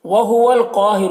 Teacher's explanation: क़ाफ को पुर पढ़ेंगे, हुरूफ़ मुस्तालिया में से है. और अलिफ मद्दा है, एक अलिफ के बराबर खींचेंगे.